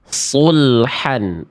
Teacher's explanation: Huruf shadnya tidak berubah menjadi huruf yang lain dan dia terangkat bagian pangkal lidahnya